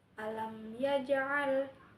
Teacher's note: Hukumnya itu izhar syafawi. Mim bertemu ya yang dibaca jelas.